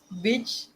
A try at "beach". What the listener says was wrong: The way you said it, it sounded different. It sounds like you're saying the BITCH because your accent. Beach. Beach. Beach. If you keep saying it, it sounds like BITCH.